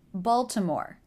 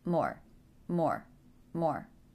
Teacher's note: stress is on the first syllable so that should be the longest after the stressed syllable the voice will come down in volume